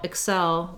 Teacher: excel the verb has second syllable stress